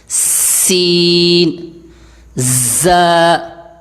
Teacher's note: اور ان حروف میں سیٹی ہوتی ہے، ذرا سیٹی کی آواز پیدا ہوتی ہے